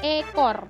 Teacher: E ini posisinya madia atas depan dengan posisi mulut semi tertutup.